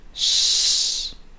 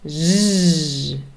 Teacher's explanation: Z very clear vibration from your vocal cords then we have shh and Z again unvoiced and voiced